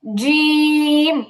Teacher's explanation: এটা আরেকটু ট্রাই করতে হবে, এটা আরেকটু ট্রাই করতে হবে যেন পরিপূর্ণ মাখরাজ থেকে হয়। জিহ্বার মাঝখানটাই তালু বরাবর লাগবে।